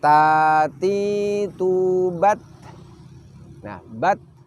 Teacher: kita mendahulukan menahan suara terlebih dahulu baru kita mengalirkan nafasnya baru kita menghembuskan perhatikan contoh tatitu bate bate disitu kita bisa merasakan suara kita